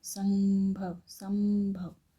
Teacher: संभव बोलते समय नाक से ध्वनि निकलती है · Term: अनुस्वार